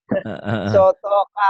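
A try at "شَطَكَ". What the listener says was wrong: Bukan. Bukan sotoka. Ini sya. Syatoka.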